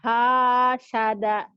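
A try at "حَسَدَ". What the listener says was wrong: Sinnya kecil. Kan nggak ada titiknya. Hasada.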